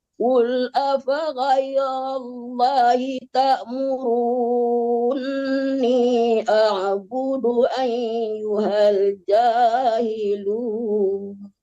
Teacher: i panjangkan dulu terus baru ditasdidkan nun dan digunakan nunnya atau didengungkan nunnya yaulang balik Qul afhairallahiurunni a'budu ayyuhal jahilun.